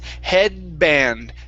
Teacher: we don't want to pronounce that d we don't want to finish it off